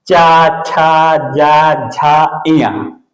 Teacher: इसका उच्चारण करते वक्त जिह्वा का अग्र भाग तालु से स्पर्श कराइएगा। जैसे कहते हैं चा, छा, जा, झा, इया, इस तरह से बोलेंगे, मेरे ताल से स्पर्श होना चाहिए।